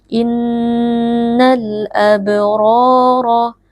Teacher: alif lam bertemu dengan Hamzah alif lam dibaca sukun dengan jelas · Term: alif lam alqamariyah